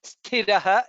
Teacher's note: Tha is Mahaprana there.